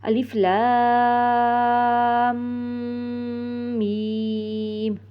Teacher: ایک اور بات کا خیال رکھنا ہے کہ آپ کا یہ ناک میں بالکل نہ جانے پائے، کہ یہ حرف لام کو بھی ناک میں نہیں جانے دینا اور میم کو بھی